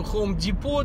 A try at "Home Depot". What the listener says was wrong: It's not Home Depot. It's Home Depot. It's a silent T.